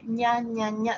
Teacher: si ustedes dicen ña ña ña ña ña ña va a ser el paladar duro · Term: sonido palatal